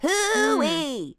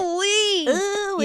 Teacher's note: I'm sort of tightening. I'm tightening at the back. I'm tightening like the pharyngeal wall a little bit. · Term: crunchy sound